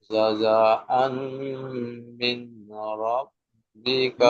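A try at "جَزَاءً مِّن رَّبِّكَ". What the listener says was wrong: মিন নয়, মির, মিম রাজের মির, মির রাব্বিকা।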